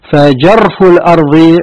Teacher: الراء أقوى من اللام لأن فيه هذا التكرار